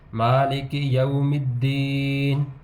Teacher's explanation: یا ساکن سے پہلے پھر زیر ہے تو اس کو ایک حرکت تک لمبا کر کے پڑھیں گے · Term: حروف مدہ